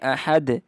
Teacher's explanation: اب ادھر دال پہ قلقلہ کرنا ہے کیونکہ یہ حروف قلقلہ میں سے ہے